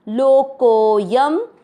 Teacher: दूसरा चरण लोको, को के बाद में एस जैसा अवग्रह, को की मात्रा को लंबा खींचना है और य पर शब्द पूरा होने के बाद जो अनुस्वार है उसको आधा म पढ़ना है।